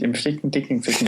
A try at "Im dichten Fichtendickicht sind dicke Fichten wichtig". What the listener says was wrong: Yeah, you said dicken Fichten.